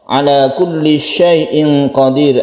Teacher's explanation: ada ikhfa, tanwin bertemu dengan qaf dibaca samar. Kemudian di sini qadir ini mad alif disukun karena dia menghadapi huruf yang disukun.